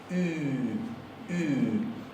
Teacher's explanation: Ponemos la boca para pronunciar una U, pero adentro de la garganta articulamos una I. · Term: la U alemana